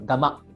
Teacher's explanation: with a glottal stop at the last vowel